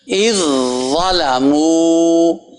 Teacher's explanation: یہ آواز پہلے جا کے زا میں ٹک رہی ہے، یہ نہیں کہ زال کو پڑھا جا رہا ہے. زال زا میں ختم ہو گئی، مل گئی، مکس ہو گئی.